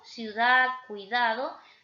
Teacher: encontrando dos vocales débiles juntas, como la I y la U, ciudad, cuidado, se van a mantener juntitas, porque yo no digo cuidado, yo digo cuidado. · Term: diptongo